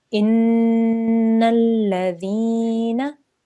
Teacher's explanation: Noon shadda here, we're going to hold on that sound for 2 seconds and make a nasal sound